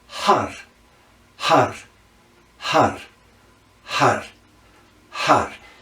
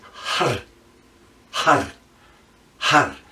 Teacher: Now you notice I'm rolling those R's because it's very important that we're hitting those meridian points in the roof of the mouth. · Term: rolled R